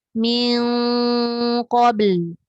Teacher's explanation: Dia macam seolah-olah MING tapi dia tebal.